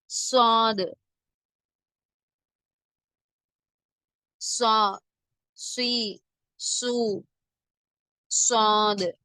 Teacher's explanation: நாவின் இடது வலது பக்கத்தை வளைத்து நுனிநாவின் மேற்பகுதி மேல் கீழ் பற்களின் நடுவில் வைத்து காற்றை அழுத்தமாக வெளியிடும் போது உண்டாகிறது.